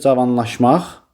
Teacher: Vurğu dördüncü hecanın üzərindədir. Cavanlaşmaq sonuncu hecanın üzərindədir. O dördüncü hecadır. · Vurğu 4-cü hecanın üzərindədir.